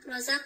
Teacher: همچنان مد اصلی است رازق میبینیم قاف ساکن از قلقله صورت می‌گیره و حرف را اینجا پر خوانده میشه